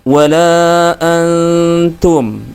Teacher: cara membaca huruf nunnya adalah disamarkan artinya nunnya tidak dibaca dengan jelas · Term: ikhfa Hakiki